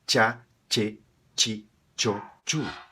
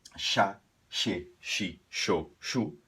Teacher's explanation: no espanhol é como se tivesse uma T antes